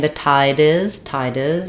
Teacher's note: If I'm saying the tide is, you're going to hear that D linking stronger.